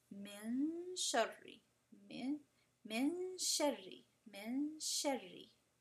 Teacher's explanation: See how you can tell there's a noon, but it's just hidden. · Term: ikhfa